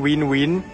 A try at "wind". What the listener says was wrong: Wind. It's a D at the back.